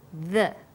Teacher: when you say the your tongue is between your top and bottom teeth